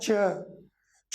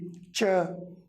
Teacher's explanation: च बोलते ही मेरी जबान दांतों के थोड़ा सा ऊपर तालू के पास आकर टच हुई